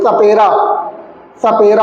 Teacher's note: इसका उच्चारण जो होता है, इसका उच्चारण करते समय जो आपकी जिह्वा होती है वो आपके दांतों से टच करती है